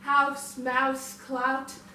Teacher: This is your ow vowel, which starts with your ah